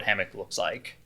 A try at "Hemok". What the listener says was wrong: With an E, hammock. You're saying with an A, hammock.